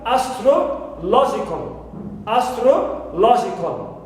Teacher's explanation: stro contains only the vowel sound shva. That's why it is unstressed.